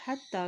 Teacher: खड़ी ज़बर है ता के ऊपर इसलिए इसको एक हरकत लंबा अदा करेंगे